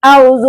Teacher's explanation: बीच में से वाव को ही हज़फ कर देते हैं